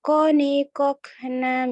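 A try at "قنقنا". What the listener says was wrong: Kecuali satu. Yang ini kelupaan di kolkolahnya nih. Yang kokona. Terbaca koni kokna minal.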